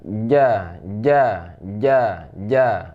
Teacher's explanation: Cara membacanya di tengah lidah, tidak ada angin ya. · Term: huruf ja